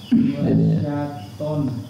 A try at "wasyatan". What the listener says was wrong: Sa pak, sa. Oke, ditebelin ya tonnya ya.